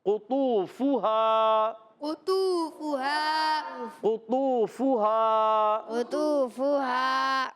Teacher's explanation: پیارے بچوں، قاف یہ حرف مستعلیہ میں سے، طا بھی حرف مستعلیہ میں سے۔ اچھا، قاف جو ہے زبان کی جڑ اور تالو کے نرم حصے سے ادا ہوتا ہے